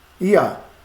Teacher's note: garantindo que a sílaba tônica recai sobre o ia